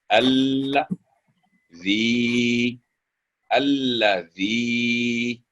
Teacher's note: क्योंकि ऊपर मद है, मद सगीरा, 3 से 4 सेकंड उसकी आवाज लंबी होगी